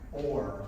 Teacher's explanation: where does the O stop and the R start, it's very fuzzy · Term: R-controlled vowels